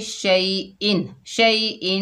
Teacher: आइन आ रहा है तो यहाँ पर इजहार का कायदा होगा, ठीक है, यानी गुन्ना नहीं करेंगे।